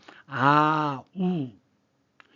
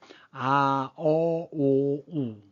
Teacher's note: 혀끝이 위로 올라가면서 목구멍 쪽으로 들어가죠.